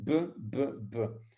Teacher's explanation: Ce lieu d'articulation est situé au niveau des lèvres et est réalisé par rapprochement des lèvres inférieures et supérieures ou labiodental, on dit. Donc, vos deux lèvres, elles se cognent un petit peu et vous faites b, b, b. · Essayez de prononcer sans vos lèvres, ben vous ne saurez jamais prononcer un B si vous n'avez pas utilisé vos deux lèvres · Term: bilabial